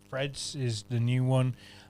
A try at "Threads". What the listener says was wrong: Threads, that was, right? I thought you said Freds. Threads. Threads.